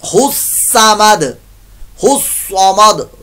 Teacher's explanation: स्वाद की जगह सीन की आवाज नहीं निकालनी, गलत हो जाएगा